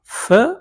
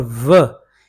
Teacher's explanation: इनमें जब फ की जब आवाज़ पैदा हो सकती है तो साथ साथ एयर रिलीज भी होती है और साथ आप आवाज़ भी पैदा कर सकते हैं। तो ये है वॉइसलेस, फ इज वॉइसलेस, व इज वॉइस्ड। ये लेबियोडेंटल हैं क्योंकि फ और व दोनों ऊपर वाले दांत जब नीचे वाले होंठ में टकराएंगे तो ये पैदा होंगी।